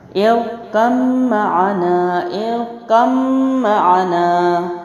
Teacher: با کو میں نے سائلنٹ کر دیا۔ کیوں؟ کیونکہ میم کے اوپر تشدید ہے۔